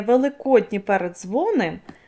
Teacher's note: ні м'який впливає на д твердий і перетворює його на м'який